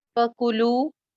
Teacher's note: कु सिंगल हरकत, लू एक अलिफ लंबा